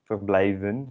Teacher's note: I don't do the V as an V, but as an F, because I'm bad at Dutch apparently.